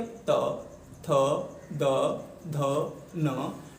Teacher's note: क्योंकि जब हम तय वर्ग के वर्णों का उच्चारण करते हैं, बोलते हैं, तो हमारी जीवा का अग्रभाग हमारे ऊपरी जबड़े के जो दांत हैं उनके पिछले हिस्से से टकराता है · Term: दंतीय